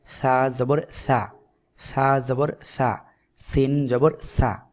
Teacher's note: জিহ্বার আগা সামনের উপরে দুই দাঁতের আগার সাথে লাগিয়ে হালকা বাতাস বের করে উচ্চারণ করতে হবে